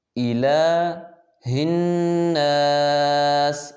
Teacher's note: جو لام کے اوپر کھڑی زبر ہے اس کو ایک الف مقدار کھینچیں گے